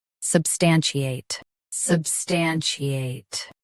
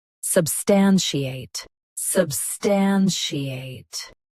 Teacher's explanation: US uses chi. UK uses she. Watch that middle sound.